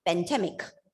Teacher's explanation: if you reduce the vowel sound to schwa, the stress will be obviously on the second syllable